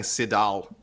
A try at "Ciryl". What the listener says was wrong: No, buddy, you roll your R, man. Ciryl.